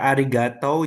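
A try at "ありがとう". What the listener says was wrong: tulisannya kan arigato. itu arigato. bacanya tuh yang bener agak panjang arigato gitu.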